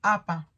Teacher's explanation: La primera marca de cierre implosión P, mientras que la segunda indica la apertura explosión P.